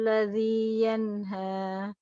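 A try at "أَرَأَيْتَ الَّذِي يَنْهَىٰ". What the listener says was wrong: Ya, barakallah.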